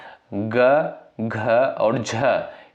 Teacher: जब आप लोग यहाँ पर ग, घ और झ इसका उच्चारण करोगे तब जो है गले में गूंज उत्पन्न होती है, तो यानी ये आपके जो है घोष वर्ण हो जाएंगे।